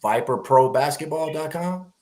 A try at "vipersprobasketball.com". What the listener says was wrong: Vipers with an S, vipersprobasketball.com.